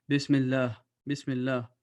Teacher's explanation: the name of Allah will be pronounced with a thin voice